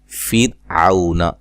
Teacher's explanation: را کے اوپر جزم ہے، یہ ساکن ہے، اور اس سے پہلے حرف پر کیا ہے؟ زیر ہے، لہذا اس را کو ہم باریک پڑھیں گے